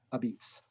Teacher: the Neapolitan dialect, they don't use the vowel at the end of the word traditionally